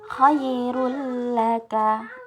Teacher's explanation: Kemudian ini ada huruf idgham bila gunnah, yaitu huruf nun sukun. Itu nun sukun atau tanwin bila bertemu dengan huruf ra dan lam itu harus langsung masuk. Jadi nun sukun dan tanwinnya tidak dibaca. Kemudian yang untuk ra dan lam ini tidak didengungkan.